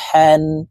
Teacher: হা হরফ হলকের মধ্যখান থেকে উচ্চারণ করতে হবে, কারণ হার মখরজ হলকের মধ্যখান থেকে হবে।